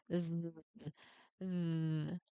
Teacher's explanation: the th requires your vocal cords to be turned on, creating a rich, steady vibration that resonates right at your tongue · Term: voiced partner